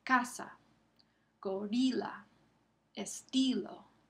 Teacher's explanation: La segunda categoría son las palabras llanas, donde el acento cae sobre la penúltima sílaba. Es la segunda de la última.